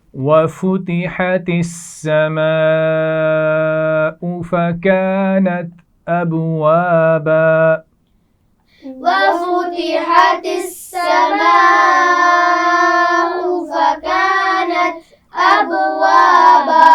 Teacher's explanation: وَفُتِحَتِ السَّمَاءُ ملا کر پڑھا جا رہا ہے، اس کا خیال رکھیے. سماء بڑی مد ہے، اس کو خوب کھینچ کر پڑھیں گے